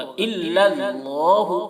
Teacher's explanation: اللہ کا لام پر ہوگا